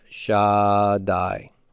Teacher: It's doubling the consonant. It's making the consonant strong. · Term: dagesh forte